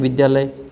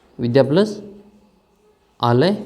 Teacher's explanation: तो इसमें विद्या में आ है और इसमें आलय में भी आ है। तो ये आ और आ बन करके क्या बन जाएगा? ये आ और आ मिलकर के आ बनता है।